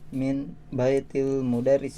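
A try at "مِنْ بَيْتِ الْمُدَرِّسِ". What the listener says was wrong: Iya, bagus sekali ya.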